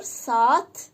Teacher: Saatın biri düşür, digəri uzun tələffüz olunur. Burada iki nöqtə qoşa nöqtə nöqtə yox, qoşa nöqtə həmin hərfin uzun tələffüz olduğunu göstərir.